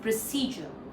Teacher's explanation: So, American way, British way, both the second part is stressed.